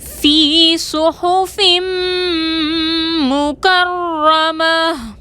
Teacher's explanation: فی میں یا مدہ ہے، 2 حرکت کے برابر کھینچ کر پڑھیں گے